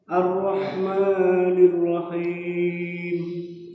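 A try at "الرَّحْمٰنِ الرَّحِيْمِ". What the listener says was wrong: Ya, sebenarnya untuk Fatihah sudah sah, tapi dua huruf harus diperhatikan. Huruf haknya agak lemah, agak lemah, sama huruf ain.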